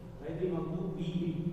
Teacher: جہاں جہاں زیر ہے نا وہاں وہ ای والی ساؤنڈ ہے اے والی نہیں · عربی میں کوئی بھی آپ جب تلاوت کریں تو اے نہیں آتا کہیں بھی. ای پڑھنا ہے.